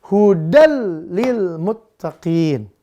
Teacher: Bertemu huruf lam, maka dia langsung hudannya dimasukkan ke lam, maka bunyinya jadi hudal tanpa dengung. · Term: idgham bila gunnah